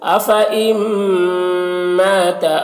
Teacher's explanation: نون ساکن کے بعد میم ہے حروف یومن میں سے، تو نون کو میم سے بدل کر غنہ کے ساتھ پڑھیں گے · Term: ادغام ناقص